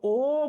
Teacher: সংক্ষিপ্ত হইলে এটাকে বলা হয় সংবৃত। ও বললে মুখ ছোট হয়, তাই সংবৃত